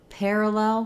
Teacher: Pair is going to have some secondary stress. Parallel, the main stress is on lel.